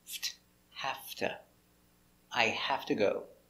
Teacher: The V changes because you link the sounds. The V changes to an F sound.